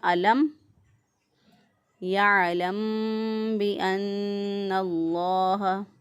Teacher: میم ساکن کے بعد دیکھیں نہ ہی میم ہے اور نہ ہی با ہے، اس لیے ہم نے یہاں پر اظہار کیا، میم ساکن کی آواز کو ظاہر کر کے پڑھا